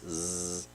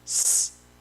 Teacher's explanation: Olha, eu vou ler esse poema, perceba a repetição de sons s e z, porque s e z, ou s e z, são sons muito próximos, só que um é sonoro, que é o que vibra as cordas vocais, z, e o outro é um sibilante surdo, s, que não vibra as cordas vocais